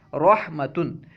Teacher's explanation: را پر زبر ہو یا پیش ہو تو را کو ہمیشہ پر پڑھیں گے، موٹا پڑھیں گے۔ مثال کے طور پر جیسے رحمتن، تو دیکھیں رحمتن میں را پر زبر ہے اس لیے رحمتن پڑھنا ہے، رحمتن نہیں، ٹھیک ہے نا، را کو پر پڑھنا ہے۔